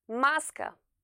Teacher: La voyelle accentuée de chaque mot se prononce avec plus de force que celles qui ne sont pas accentuées. Le premier A, celui qui est accentué, est prononcé avec plus d'intensité et s'entend plus clairement que le deuxième A qui s'entend très brièvement car pas accentué.